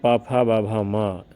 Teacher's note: इन वर्णों का उच्चारण स्थान ओष्ठ है